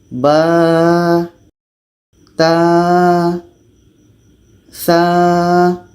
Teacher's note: Ketika kita bertemu huruf mad, maka dibaca panjangnya dua harakat. Jadi ketika sebut huruf ba ini jangan sampai ada berangin